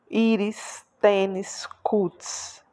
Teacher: Mas percebam que a sílaba tônica é a penúltima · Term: paroxítonas